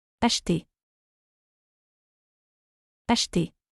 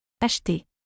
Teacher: E and R sounds like A, similar to A in English but without the diphthong.